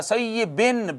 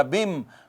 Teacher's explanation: تو سیبن تھا، سیبن، بن بن نون تھا، اس نون کا ادغام میم میں ہو گیا، تو بن کی بجائے بم ہو گیا